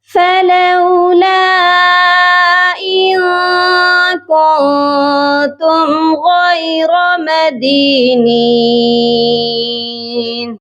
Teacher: غین کو بھی موٹا کریں گے اور را کو بھی موٹا کر کے پڑھا جائے گا